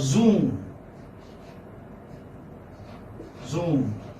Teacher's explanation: Long oo sound and then ma, zoom.